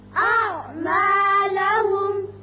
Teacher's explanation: یہاں وقت کی صورت میں بھی میم پر اظہار ہوگا اور وصل کی صورت میں بھی یہاں اظہار ہوگا